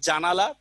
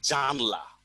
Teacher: তার মানে দেখেন জানালায় 3টা স্বরধ্বনি হচ্ছে আর জানলার মধ্যে স্বরধ্বনি হচ্ছে দুটো। তার মানে দেখেন বেশি থেকে কম হয়েছে কিনা, এটা স্বরলোপ।